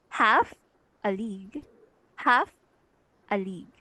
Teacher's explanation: Okay, so we have three syllables here, half a league. The first one, which is half, is stress, so you can see the bold letter, while the a league are both unstressed syllables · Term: dactyl